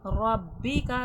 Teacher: را پہ زبر ہے، موٹا کر کے پڑھا جائے گا